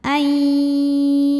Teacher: bunyi nun sukun ini dimasukkan atau dileburkan ke ya disertai bunyi dengungan. Jadi kita tahan. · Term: idgham bil gunnah